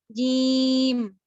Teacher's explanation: تو وسط لسان ہے اس کو میں نے ٹچ کیا اوپر کے نرم یا پھر سخت تالو پہ